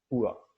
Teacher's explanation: So ua, that is the glide starts from a back rounded wall uh, above the mid clause and mid clause position, and moves in direction to a central unrounded wall between half closed and half open position. The lips are weakly rounded at the beginning and neutral at the end. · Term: centering diphthong